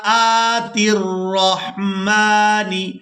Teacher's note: حمزہ کو کھڑی زبر کی وجہ سے کھینچ کر ادا کریں گے اور تا کو را مشدد کے ساتھ ملائیں گے